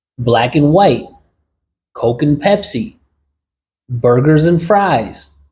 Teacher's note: And becomes n, black and white, Coke and Pepsi, burgers and fries. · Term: reductions